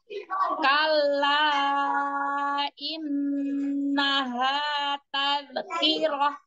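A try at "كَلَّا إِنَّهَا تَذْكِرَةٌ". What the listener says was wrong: Huruf dalnya jangan mantul. Dialirkan suaranya ngalir. Tapi setelah pindah ke ki itu dalnya itu sudah habis. Jangan mantul. Tadhkirah.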